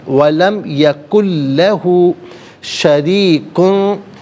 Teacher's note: ولم یکن میں نون ساکن ہے، نون ساکن کے بعد لام ہے، نون ساکن کو لام کے ساتھ ملائیں گے اور لام کی آواز کو ادا کیا جائے گا، یہاں پر بھی یرملون کا جو قاعدہ اپلائی ہوگا۔ · را کے نیچے زیر، را کو باریک کر کے پڑھیں گے